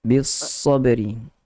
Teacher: Kita punya lidah berada pada bahagian gigi bawah, belakang gigi bawah tu. Kemudian ada dia punya geseran. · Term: sofir